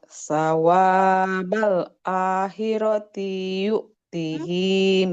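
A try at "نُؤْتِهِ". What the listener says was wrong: nggak panjang. Taknya nggak panjang Ibu. Sama bukan yu'tihi tapi nu'tihi. kalau huruf ya itu titik dua di bawah ya.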